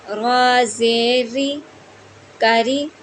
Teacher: रा के नीचे ज़ेर है तो रा को हम बारीक पढ़ेंगे